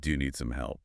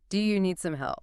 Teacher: gentle rise, it sounds warm and supportive